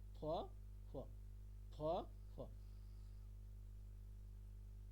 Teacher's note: দুটো ওষ্ঠ পুরোপুরি টাচ করব না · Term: অর্ধেক ফ